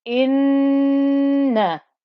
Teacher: It's joining to the noon. The noon has a shadda, so that means the ghunna. We must hear the ghunna. Inna, there's the fatha on top.